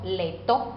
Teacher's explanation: La L es alveolar, aproximante lateral, sorda, consonántica.